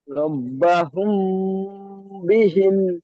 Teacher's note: মিম সাকিনের পরে বা এসেছে, তাই মিম সাকিনকে একালি পরিমাণ গুণনা করে পড়তে হবে। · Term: ইকফায়ে সাফাবি